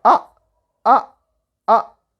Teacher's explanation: say like ah ah ah so this is four tone ah from up or high pitch to low pitch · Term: fourth tone